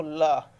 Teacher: जीवा के बगल में गुजरने के कारण इसे पार्श्विक व्यंजन कहते हैं